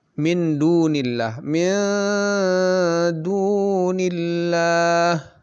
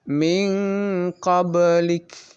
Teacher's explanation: nun mati bertemu dengan dal yang merupakan huruf ikhfa kubro, maka lebih lama dibandingkan dengan yang sugro yang paling rendah ya. · Nah, jadi dari segi dengungnya, lama dengungnya, ming itu lebih singkat waktu dengungnya dibanding dengan miduni. Miduni itu lebih lama dibanding dengan min qablik. Sama disamarkan dan dengungnya juga, tetapi lebih singkat sedikit yang min qablik itu.